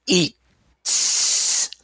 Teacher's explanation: What you do is you make the T longer. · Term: French T